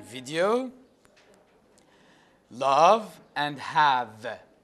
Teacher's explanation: You see, there is vibration in the vocal cords.